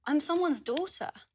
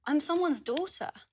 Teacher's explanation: As you can hear, uses the /ɔː/ vowel in the first syllable of 'daughter'.